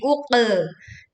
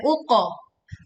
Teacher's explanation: kita menekan pada qaf sukun dengan memantulkan dengan suara yang tebal, bukan miring menjadi uqe.